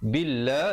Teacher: lafzul jalalah dibacakan dengan nipis dua harakat